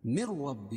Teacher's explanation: ادغام بلا غنہ کیونکہ نون ساکن کے بعد ادغام بلا غنہ کے 2 حرفوں میں سے را ہے. را پر تشدید ہے اور اس کے اوپر زبر ہے تو را پر ہوگی.